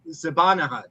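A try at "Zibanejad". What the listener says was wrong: That's not how his name is pronounced. A Y instead of a H.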